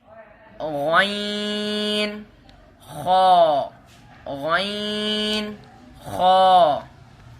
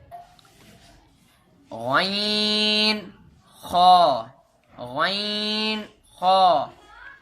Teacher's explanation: یہ حلق کے اوپر والے حصے سے ادا ہوتے ہیں